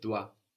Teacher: we end in an S but we don't hear it